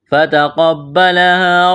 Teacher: تا کو باریک کرنا ہے، قاف کو موٹا کرنا ہے